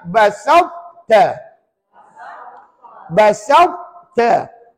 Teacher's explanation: Baca, tapi hanya dibaca tebal, tidak melantun.